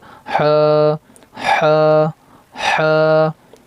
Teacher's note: हा इसको हलक से अदा करेंगे